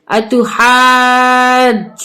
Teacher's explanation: 6 الف کے برابر کھینچیں گے، اور نون پہ مشدد ہے، نون مشدد ہے تو اس کو ہم غنّے کے ساتھ پڑھیں گے